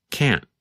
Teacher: sometimes you can hear the letter T when we say can't but other times it is harder to hear